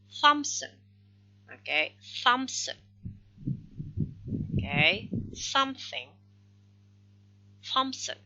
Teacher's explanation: the name Thompson, it doesn't need p, but some people when insert the sound p between, it becomes Thompson. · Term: epenthesis